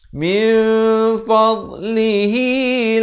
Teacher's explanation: Di sini ikhfa hakiki, disamarkan dua harakat.